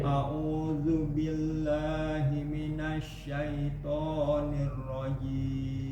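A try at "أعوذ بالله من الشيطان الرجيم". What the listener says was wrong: Syaitan bukan to. Bukan to. Lebih ke A sedikit lagi, Pak. Jangan terlalu O. To. Nah, caranya adalah buka mulutnya, Pak.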